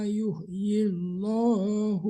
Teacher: Karena kasrah sebelum lam Allah. Lam allahnya ditipiskan ya.